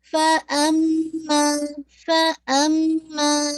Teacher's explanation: تو make sure اما پہ آپ نے پورا غنہ 2 کاؤنٹ کر کے دیکھیں، غنہ بھی 2 ہے اور الف مدیہ بھی 2 ہے، تو دونوں کی کا جو کاؤنٹنگ ہے وہ کم نہیں ہو.